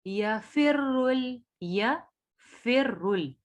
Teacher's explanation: रॉ को मोटा पढ़ेंगे, रॉ पे पेश है